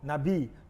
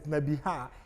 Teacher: From Nabi, the prophet, which is Nabi, carries kames, but when it's come to the prophetess, Nebiha, the kames drop to simple shua. So, because this is two syllables, Nabi.